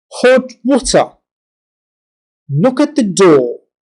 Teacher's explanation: While comparing short and long sounds in this exercise, please pay attention to phrase stresses. There are 2 stresses in each, with the first one being minor and the second the major.